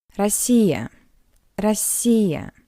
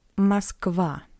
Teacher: In an unstressed position, the letter O read as a weak A, like in the word Россия, Россия, Russia. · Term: unstressed O